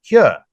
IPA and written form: hɪur (here)